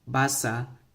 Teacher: this last one kind of has a little glottal at the end